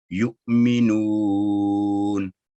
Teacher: नू की आवाज हम 2 से 3 सेकंड भी लंबी कर सकते हैं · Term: वाव मद्दा